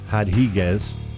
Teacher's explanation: any time it's a brazilian fighter you get rid of the r and it's pronounced h